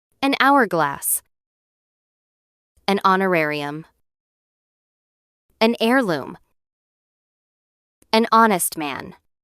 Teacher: Because we don't pronounce the H, the word actually starts with a vowel sound. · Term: silent H